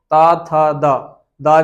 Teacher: तवर्ग का उच्चारण स्थान दंत हो जाएगा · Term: दंत वर्ण